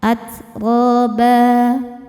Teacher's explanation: At ba ketika berhenti hukumnya adalah mad iwad karena ada harakat tanwin fathah yang diwakafkan. Cara bacanya tanwin ini diganti jadi fathah ya dan dipanjangkan dua harakat.